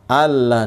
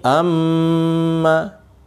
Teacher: mim tasdid dan nun tasdid ini yang disebut gunnah, dibaca gunnah, didengungkan.